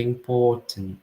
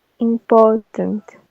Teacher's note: Não vai pronunciar o R. E o O e o R vão ter esse som que é um O mais longo, o O do horse. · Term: non-rhotic